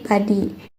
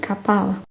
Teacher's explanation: Contohnya P dengan hembusan hanya muncul di awal kata seperti padi. Sedangkan P tanpa hembusan muncul di tengah kata seperti kapal.